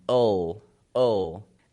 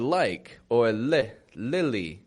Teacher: that L is what we would call a dark L it isn't an L like the word like or l lily that's a light L